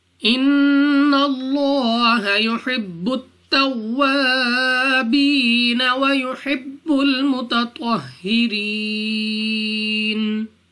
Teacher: नून मुशद्दद है, गुन्ना करके पढ़ना है। लाम ऑफ अल्लाह से पहले हर्फ पर ज़बर, तो इस लाम ऑफ अल्लाह को पुर यानी मोटा पढ़ेंगे और लाम को खड़ा ज़बर की वजह से 2 सेकंड तक लंबा की करना है।